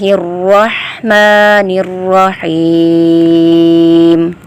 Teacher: حلق کے درمیانی حصے سے ہا کی آواز پیدا ہوگی۔ میم کھڑی زبر ما ہے تو یہ الف مدہ کی طرح پڑھیں گے۔ اسی طرح پھر را ہے، را کے اوپر زبر ہے، را کو پر پڑھا جائے گا۔